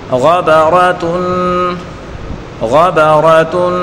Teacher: تینوں کو بغیر کھینچے پڑھیں گے. غین کو پر پڑھیں گے اور را کو بھی پر پڑھیں گے.